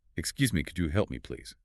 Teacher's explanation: When asking a polite question in English, the tone of your voice should rise slightly, almost musically, at the very end of the sentence to show that it is a gentle inquiry, not a command. >> Listen carefully to the intonation curve of my voice, how it lifts at the end.